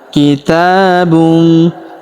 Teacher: Kemudian huruf ta kita panjangkan 2 harokat karena terdapat alif kecil di atasnya. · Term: panjangkan dua harakat